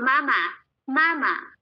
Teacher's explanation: yung unang unang syllable lang yung may tono yung pangalawang syllable neutral na or wala ng tone